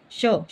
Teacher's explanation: तालु से बोला जाता है, तालव्य होता है